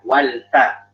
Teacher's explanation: fahnya lebih tipis ya, wal fa